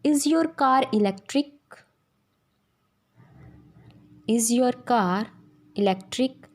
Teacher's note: आर silent नहीं होता, आर की साउंड हम बोलते हैं, as it इज़ in इज़ योर कार इलेक्ट्रिक, इज़ योर कार इलेक्ट्रिक। इसमें जब भी कोई भी ऐसा वर्ड जो आर से एंड होता है किसी सेंटेंस के बीच में आता है और उसके इमीडिएट बाद कोई भी वोवल से स्टार्ट होने वाला वर्ड है तो हम आर की साउंड प्रोनाउंस करेंगे